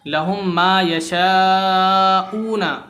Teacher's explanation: ادغام شفوی ہے تو ہم اسے کھینچ کے پڑھیں گے